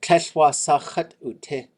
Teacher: So this chat is always low tone, and that's how we know it's an object pronoun.